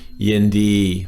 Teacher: flat tones. There's nothing there, so that's your normal voice